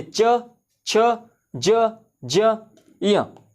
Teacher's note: च, छ, ज, ज, य, ये सभी आपके तालु से निकलते हैं। तालु क्या होता है, ये आपका मुंह हो गया अंदरी हिस्सा, और ये आपका जीभ हो गया, और ये जो आपका मुंह का जो ऊपरी हिस्सा है ना, ये दांत से ऊपर ये जो हिस्सा है, इसको तालु कहते हैं, है ना, इसको क्या कहते हैं, तालु कहते हैं। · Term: च वर्ग